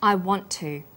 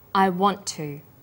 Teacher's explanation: is held slightly longer on the tongue then tu is pronounced t sound is pronounced only once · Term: consonant plus same consonant linking